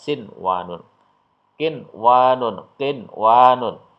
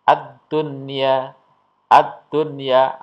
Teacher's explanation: Jadi nun sukun atau tanwin tetap dibaca jelas atau terang tanpa mendengung. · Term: idhar wajib